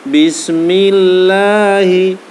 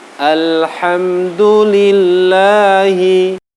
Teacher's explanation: Ini dibaca dengan bacaan tipis, bacaan tarqiq.